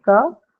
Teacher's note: First sound of the stress syllable. So aspirated.